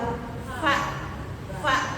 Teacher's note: Gigi seri nempel bibir bawah.